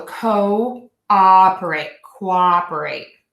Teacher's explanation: So in that section of the O that's broken into two parts, co is a true O, co-operate. And then that second O is a very open American ah